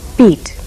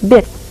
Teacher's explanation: others The Sounds e and I are one tense LAX pair my mouth is tense when saying the long e sound beat my mouth is relaxed when saying the short I sound bit